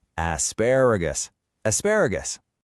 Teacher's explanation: notice how the stress is on that second syllable